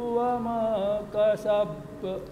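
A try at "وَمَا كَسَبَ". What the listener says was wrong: Masih ditahan. Langsung kasab.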